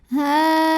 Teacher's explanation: Maka lamnya dipanjangkan, boleh 4, boleh 5 harokat. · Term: mad wajib muttasil